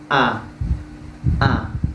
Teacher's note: Jadi hamzah ini tertahan nafas kita. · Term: jahar